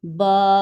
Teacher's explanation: جیسے ہی ہم اس کے ساتھ الف کو جوائن کرتے ہیں با زبر الف تو اب اس کو ہم ٹو سیکنڈ کے لیے کھینچ کر پڑھیں گے ہم اسے ایسے پڑھیں گے با پہلے تھا با زبر ب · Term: الف مدہ